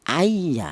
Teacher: Ya, ini definisi idgham atau arti yang lain itu menyatu atau melebur yaitu cara bacanya nun mati ini cara bacanya langsung disatukan ke huruf ya. Itu namanya idgham. · cara bacanya non mati ini cara bacanya langsung disatukan ke huruf ya